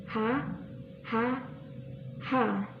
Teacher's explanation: pita suara agak terbuka lebar di kedua mulut terbuka bibir tidak menyentuh yang ketiga lidah rata · Huruf H ini itu bunyi faringal, yaitu bunyi yang dihasilkan atau proses penghasilan bunyinya dalam rongga faring. Cara penyebutannya yaitu yang pertama, pita suara agak terbuka, lebar.